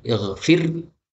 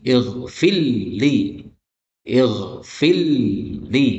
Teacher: Kemudian secara bacaan, ighfirli, nah ini roknya boleh muncul, ighfir, boleh juga roknya lebur masuk kepada lam, menjadi ighfirli, ighfirli, ya. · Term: bacaan idgham